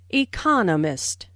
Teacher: There are four syllables in economist with the stress on the second syllable. · the stress on the second syllable, economist.